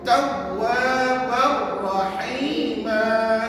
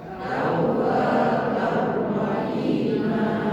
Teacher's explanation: Tadi ustaz ngajar tanwin ni tak berbunyi, sebaliknya yang kita bunyikan ra yang satu.